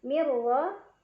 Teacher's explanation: Cara bacanya nun sukun dimasukkan ke huruf ra tanpa berdengung, jadi cukup ditekan. Mirra, ra dibaca secara tafkhim karena ra berbaris dan barisnya di atas, jadi dibacanya tebal. Tebal itu pangkal lidah kita terangkat.